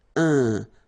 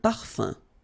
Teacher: So it's nasal and it's un. So it really goes in your nose. You don't pronounce the M at all.